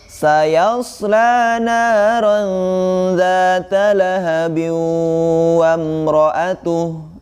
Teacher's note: Namun jika diwasalkan atau dilanjutkan ke ayat yang berikutnya, maka di situ dihukumi idgham bi gunnah karena masuk ke hukum nun mati atau tanwin bertemu dengan huruf waw ya, maka dimasukkan dan ditahan ya